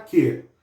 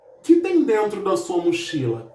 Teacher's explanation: Esse que, no final da frase, ele recebe acentuação, ok? Então aí nós temos um monossílabo tônico.